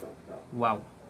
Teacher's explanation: bertemunya antara bibir atas dan bawah namun ada sedikit rongga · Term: huruf Waw